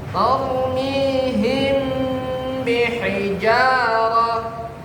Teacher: penekanan di bibirnya katanya. Ya. Kalau yang ikhfa syafawi itu benar-benar tekan.